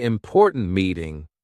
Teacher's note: Say important meeting with a sharp T at the end of important.